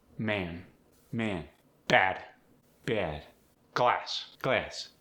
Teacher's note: Words like man, bad, glass. They're tighter, more raised. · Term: the short A split